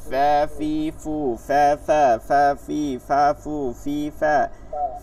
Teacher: নিচের ঠোটের পেট লাগবে উপরে দুই দাঁতের আগা লাগবে